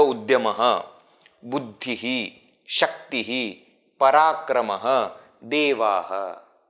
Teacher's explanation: when I am independently pronouncing a word that ends with Visarga, then the pronunciation of Visarga is Ha.